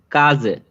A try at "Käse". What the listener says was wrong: খেইজে, নট খাজে, খেইজে, এ umlaut, হ্যাঁ।